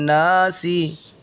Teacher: نون کو کھینچیں گے اس لیے کہ الف ہے، الف پر کچھ بھی نہیں ہے۔ حمزہ زیر ای، لام کھڑا زبر لا، ہا نون زیر ہن، الہن، نون الف زبر نا، سین زیر سی، الہن ناسی، تو ناسی نہیں کہیں گے، الہن ناس، الہن ناس۔